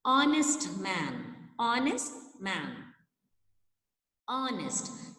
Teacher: The word is starting with H, but H sound is not said there. It is not pronounced. A sound is there. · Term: H is silent